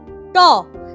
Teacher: তোমার জিভটা দেখো ওই দাঁতের ঠিক পেছন দিকে যে শক্ত মতো উঁচু মতো জায়গা, যেটাকে আমরা মূর্ধা বলেছিলাম, সেখানটায় ধাক্কা মারছে, আটকাচ্ছে শ্বাসবায়ুটাকে কিছুক্ষণের জন্য, তারপর রিলিজ করছে।